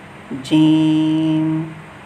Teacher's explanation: زبان کا جو درمیان ہے یہ اوپر کے تالو سے لگتا ہے